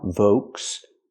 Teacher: Use the V sound like very, v, plus the long O, Volks. The L is silent. Make the long O sound, Volks.